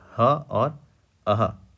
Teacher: जब आप ह का उच्चारण करते हैं तो जो आपका हवा है बिना अवरोध की सीधा बाहर निकलता है